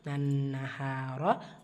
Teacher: ரா பத்ஹா பெற்று வந்திருக்கு வல்லினமா ஓதணும்